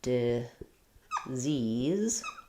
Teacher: So we have two Z sounds in disease, and the stress is on the second syllable · I'll think of that first letter I as being the lax I sound, short and reduced vowel. And then second is the stressed tense E sound, disease.